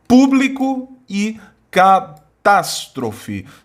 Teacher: Sílaba tônica é a antepenúltima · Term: proparoxítonos